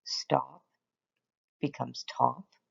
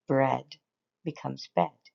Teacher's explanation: Notice that sometimes they delete the first sound, stop becomes top, and other times they delete the second sound, bread becomes bed. It's usually the simpler sound that stays and the more difficult sound that's left out. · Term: consonant cluster